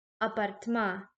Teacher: we stress the vowel at the end. So his genitive singular is apartmaya. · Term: stressed vowel